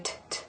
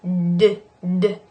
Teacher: So D is very similar to T, but it's what we call voiced. So instead of just going t, t, which is purely air, d, d, you have to use your voice for that.